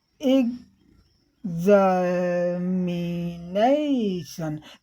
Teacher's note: नेशन जब हम कहने लगते हैं तो हमारी हाई पिच हो जाती है